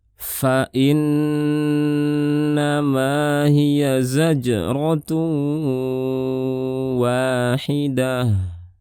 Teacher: Ini ada hamzah, nun tasydid, gunnahnya dipanjangkan. · Kemudian di sini ada jim sukun, qalqalahkan. Kemudian ada tanwin bertemu dengan waw, idgham bi gunnah. Dan ini ada mad tabi'i, dan terakhir ta marbutah.